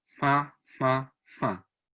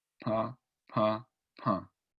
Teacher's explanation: Como yo logré cerrar el paso del aire, se aumentó la presión dentro de la boca y logré hacer explosión. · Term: obstrucción nasal